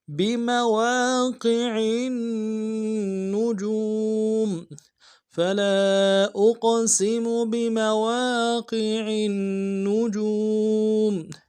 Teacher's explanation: واو مدہ ایک الف مقدار میں کھینچیں گے ، میم کو نرم سے ادا کریں گے۔ بمواقع النجوم، فلا · واو کے اوپر کھڑا زبر ہے، ایک الف مقدار میں کھینچیں گے · عین کو آگے نون کے ساتھ ملانا ہے، نون کے اوپر تشدید زور دیں گے ، اور جیم کو واو کے ساتھ ملانا ہے، واو مدہ